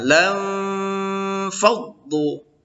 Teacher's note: nun mati bertemu fa itu juga ikhfa, berdengung ya